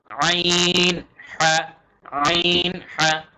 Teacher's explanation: আইন এবং হা একটু গলার ভেতর থেকে আসবে বাংলায় কিন্তু এরকম হরফ নেই তাই এই দুইটা আমাদের খুব ভালোমতো